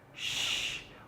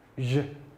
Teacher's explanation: The first sound there is the sound sh, sh, while the other is the sound j, j. The first sound is voiceless, while the other sound is voiced. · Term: palato-alveolar consonants